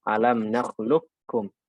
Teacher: Qaf ketemu kaf, qafnya hilang murni. Ya total masuk ke kaf